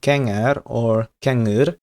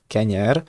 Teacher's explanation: with an internal ŋ, a velar nasal, instead of an original palatal ɲ